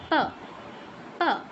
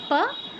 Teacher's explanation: দুইটা ঠোট একবার অফ হবে একবার অন হবে